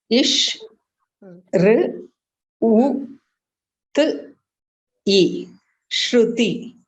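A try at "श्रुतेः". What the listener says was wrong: No, read the last varna once again. You missed pronouncing the visarga. So, yeah, so it is Shrutihi. Yeah, Shrutihi.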